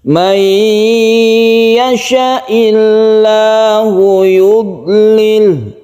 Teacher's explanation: Karena sukun tidak bisa langsung ke tasydid, maka sukun itu diganti menjadi kasroh, tapi tetap pendek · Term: majzum